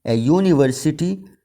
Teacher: یہاں پر یو سے یہ لیٹر شروع ہوتا ہے مگر اس کی آواز یہ کنسوننٹ کی طرح نہیں ہے، اے یونیورسٹی اس کی آواز وائی کی ہے